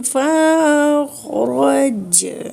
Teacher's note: جیم ساکن ہو گیا تو جیم پہ کلکلا کریں گے